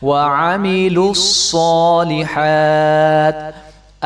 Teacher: وَبَشِّرِ الَّذِينَ آمَنُوا وَعَمِلُوا الصَّالِحَاتِ لام کو صاد کے ساتھ ملا دیں گے، صاد مشدد ہے تو صاد کو خوب موٹا کر کے بھی پڑھیں گے، صاد موٹا حرف ہے تو اس کو ہمیشہ ہی موٹا پڑھتے ہیں۔